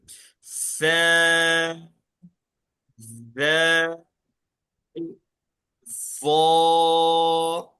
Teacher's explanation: इन तीनों को क्या करेंगे हम पढ़ते वक्त, जबान की नोक थोड़ी सी जबान बाहर निकाल कर पढ़ेंगे